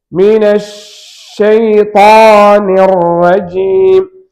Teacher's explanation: ஷீனு சத்தப்பட்டிருக்கிறது. ஷீனுக்கு ரகாவத் என்ற ஒரு தன்மை இருக்கிறது என்பதால் இந்த ஷீனுடைய சுக்குனுடைய இடத்தில் அதை நாம் வெளிப்படுத்த வேண்டும். அது அந்த சத்தம் கடந்து போவதற்கு நேரம் கொடுக்கணும்.